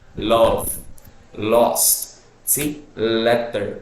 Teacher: when you pronounce these words the air passes through the side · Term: lateral